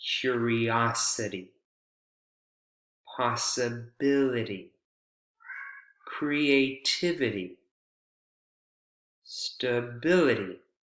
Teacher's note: right before the suffix in this case it's I Ty suffix the syllable right before the suffix receives word stress